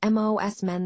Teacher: Similarly, when we say most men, it often becomes MOS men. The T in most can be elided, making the phrase flow more smoothly and naturally.